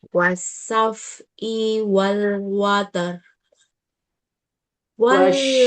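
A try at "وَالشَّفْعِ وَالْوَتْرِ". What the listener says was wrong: Wasyaf'i wal ainya kepanjangan nah.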